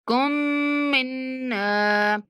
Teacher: کاف کو جب مشدد میم سے ملانا ہے تو غنہ کرنا ہے